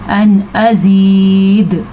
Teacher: जब हम यहाँ पे वक्फ करेंगे तो दाल साकिन हो जाएगी, तो साकिन दाल पे कलकला मस्ट है